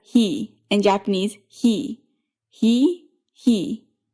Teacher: This consonant is basically what happens when the middle of your tongue raises up towards your hard palate